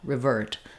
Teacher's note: now the ver syllable is stressed, so it's going to be longer in duration. And the R is going to be short. · It may even sound a little bit like a R sound, because here, rather than the clear, long I in river, it's going to be a shortened, reduced vowel, revert. So it's still the I sound.